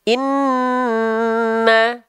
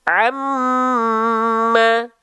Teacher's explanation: mim bertasydid maka dia ditahan dua harakat baru dia ditahan contohnya Nun bertasdid tahan dua harakat · kita melafalkan huruf nun dan mim bertasydid maka dia ditahan dua harakat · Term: ghunah